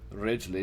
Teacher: it almost sounds like i'm pronouncing an l unless i have the opportunity to fully roll the r